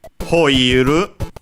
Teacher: Hoiru will, but as you can see, in this case, unlike our usual pronunciation of will in English, in Japanese they took it from some who pronunciated with an aspirated hu at the start, and so it became ho. Couldn't become hu because with the u, because that's closer to is hu, a bilabial fricative, and so closer to our f instead of an h, and so hoi, ho, and then of course iru to make hoiru.